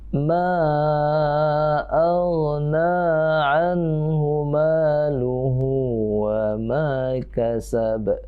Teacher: Ma itu sama tanda pedang, ya, disambut dengan alif mad jaiz munfasil. Kita baca panjang.